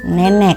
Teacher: vokal E, tengah bawah depan tak bundar pada kata nenek